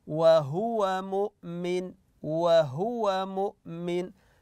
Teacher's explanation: لا نتم الضمه في حرف الهاء خاصه اذا كان معها واو وهو او فهو ننتبه للضمه على حرف الهاء وهو مؤمن وهو